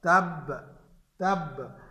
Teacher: جس پر شد ہو وقف کی حالت میں اسے اس طرح ساکن کر دیں گے کہ شد بھی باقی رہے، تشدید بھی باقی رہے اور حرکت بھی ظاہر نہ ہو